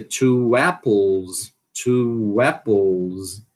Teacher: existe o wa de ligação. Quando é que esse wa de ligação acontece? Quando a palavra termina em u, né? E a próxima palavra começa com uma vogal.